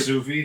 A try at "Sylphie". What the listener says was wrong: Alright, moving past the fact that you can't pronounce Sylphie. What L do you think you're pronouncing? The way you say it makes it sound like you're saying Sophie or Sophie half the fucking time.